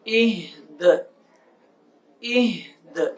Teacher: آگے حمزہ، ہا زیر ای، دال زیر دی، دی، دی، وقف، دال ساکن ہو جائے گا اور دال کے اوپر قلقلہ کر کے پڑھیں گے